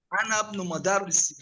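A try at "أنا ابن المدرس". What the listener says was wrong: Ana ibnul lam sukun. Ana ibnul.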